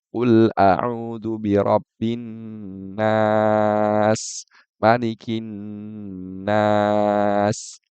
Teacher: Dipanjangkan, tapi yang kedua, Malikin nas. Itu dia panjang cuma apa, tidak selama yang pertama. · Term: mat arid disukun